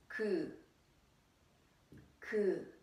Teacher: So when you pronounce 기억, 그 sound, your tongue touches the back side of your palate. I mean the roof of your mouth.